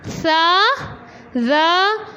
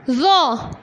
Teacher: سا اور زا باریک پڑھی جاتی ہے جبکہ زو کو ہم موٹا پڑھتے ہیں.